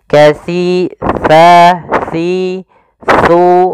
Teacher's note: Untuk menyempurnakan makhraj daripada huruf sa, kita harus mengetahui posisinya dulu, tempat keluar hurufnya, yaitu ada di mana ujung lidah kita menempel dengan gigi seri atas